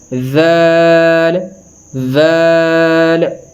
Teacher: دال ذال ذال، اسی طرح جس طرح میں نے آپ کو ثا کے ادا کرنے کا طریقہ بتایا ہے کہ دونوں دانتوں کے درمیان زبان کی نوک کو رکھ کے اس کو ادا کرتے ہیں، تو سیم اسی طرح یہاں پر بھی ایسے ہی ہے کہ اوپر والے اور جو نیچے والے دونوں دانتوں کے درمیان زبان کی نوک کو رکھ کر اس کو نرمی سے ادا کرتے ہیں